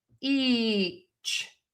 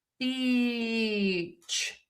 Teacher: your lips close for that B sound. And so for a lot of people, it's really difficult to move from that sound to wide open for that long e.